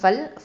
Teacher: ஃப வந்து ஷஃபத்தான் உதழெழுத்து, லாம் வந்து ஹஃபத்துல் லிசான். அப்புறம் ஃபல் அப்படின்னு சொல்லும்போது அந்த இடத்துல கொஞ்சம் இந்த தவசுத்த டைமிங் கொடுக்கணும்.